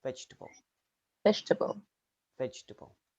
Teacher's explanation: in vegetable the second e can disappear